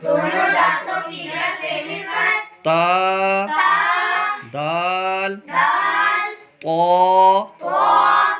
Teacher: نوک زبان اوپر کے سامنے والے دونوں دانتوں کی جڑ سے مل کر تا دال طا ادا ہوتے ہیں۔